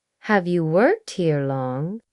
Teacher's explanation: When native speakers ask friendly questions, their voice often rises a little at the end, like a soft lift, as if they're offering you a chance to speak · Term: upward tone at the end